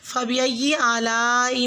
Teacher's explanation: لام کی جو الف کے اوپر مد ہے اس کو 5 سے 6 حرکہ لمبا کھینچیں